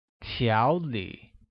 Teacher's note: pronounced with a mid-rising tone on a and a falling rising tone on I, like 条理. Very good.